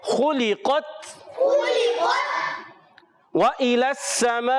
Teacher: सीन पर तशदीद है, सीन की अदायगी सीटी के साथ अदा करेंगे। · वाव को होठों की गोलाई से अदा करेंगे, हमजा वाज़े करेंगे।